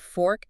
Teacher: You get that fricative of f sound at the front, right? >> Then an or vowel shape and a hard k consonant at the end.